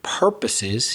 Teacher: so you stress the first syllable